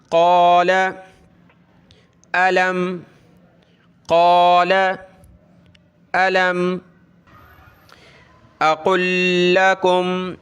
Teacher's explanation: یہاں لام ہے اور اس کے ساتھ آگے لام ہے، تو یہ جب ملیں گے آپس میں تو ایک لام پڑھا جائے گا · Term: ادغام